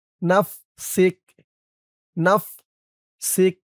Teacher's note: অক্ফ করার কারণে কাফের উপরে জবরটা সাকিন হয়ে গেছে